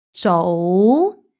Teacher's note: 早 is a high rising tone. 早 and it's followed by 到 mid-level flat tone.